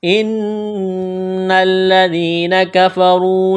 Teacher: الف کے نیچے زیر ہے، اس کو حمزہ پڑھیں گے، نون مشدد پر غنہ کریں گے، آواز ناک میں چھپائیں گے. ان الذین، ذال کو نرم کرنا ہے، یا مدہ ہے، ایک الف کے برابر کھینچنا ہے.